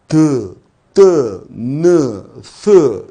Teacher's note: 이렇게 혀끝을 이용해서 내면 혀끝 소리 또는 잇몸 소리라고 표현을 하죠